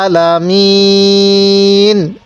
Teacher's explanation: এই আইনটা একটু চাপ দিয়ে পড়ব এবং এই শেষে ওয়াকফের কারণে 3 আলিফ টান দিব।